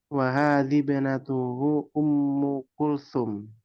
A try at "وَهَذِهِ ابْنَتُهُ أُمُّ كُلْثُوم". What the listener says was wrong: Ya, coba diperbaiki ya. Bukan wahadhib. Wahadhihi benatuhu. Hanya disempurnakan. Wahadhihi. Wahadhihi benatuhu.